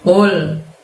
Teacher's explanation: menggunakan pangkal lidah kalian yang hingga menyentuh langit-langit